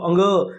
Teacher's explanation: नाक बंद करके बोल के देखो अंग की धवनी नहीं आएगी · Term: नासिका